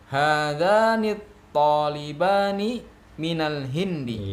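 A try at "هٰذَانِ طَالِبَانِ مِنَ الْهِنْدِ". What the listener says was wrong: Iya, bagus ya.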